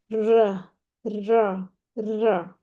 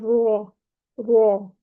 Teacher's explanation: را کی ترقیق کرتے وقت پشت زبان کا تعلق ضعیف ہوگا، زبان کے پچھلے حصے کو ہم نے اوپر نہیں اٹھانا